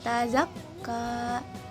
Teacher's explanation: lafal nun dibaca samar disertai gunah. Lidah bersiap ke makhraj huruf ta, baru bersiap, tapi belum di makhraj tanya, baru lafalkan ta yang berharokah.